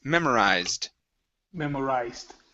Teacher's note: it does not end with the T okay or a d it's ending with a z so this is we're going to skip over that e sound